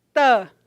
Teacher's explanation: faz um som em casa e percebam a articulação não é a sua pontinha de sua língua tocando lá nos alvéolos ou nos dentes incisivos superiores